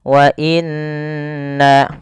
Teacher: Pada lafal bacaan wa inna, pertama ini ada yang nun berharokat tasydid, harus ditahan suara nunnya. Wa inna, karena dia hukumnya ada bacaan gunnah.